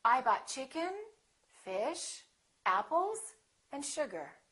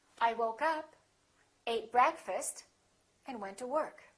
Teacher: when you have that rising intonation people know that that's not the last element something more is coming